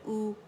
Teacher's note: और हमज़ा दम्मा ऊ, और इसमें आवाज़ गोल हो जाती है, और हम जो लिप्स है उनको फॉरवर्ड फ्रंट में पुश करते हैं आउटवर्ड, ठीक है। और जो ज़बान का बैक है वो रेज़ हो जाता है